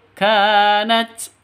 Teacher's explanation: K-nya panjang 2 ketukan karena di sini ada alif. Yang berdiri ini alif, terus K-nya berharokat fathah. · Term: mad asli